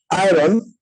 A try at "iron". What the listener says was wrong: আয়রন। আরটা কি আপনি সাইলেন্ট রাখছেন? এই যে আরটা থাকবে এটা একটু সাইলেন্ট রাখতে হবে, রাইট?